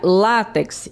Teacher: o acento tônico é no lá e não no final